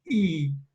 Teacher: is a high front vowel